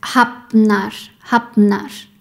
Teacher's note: First is the combination of F and N. Sometimes when F and N are together, they are pronounced like BN